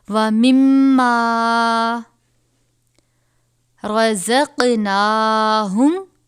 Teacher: حروف قلقلہ میں سے جنبش کے ساتھ پڑھیں گے یعنی آواز لوٹتی ہوئی محسوس ہو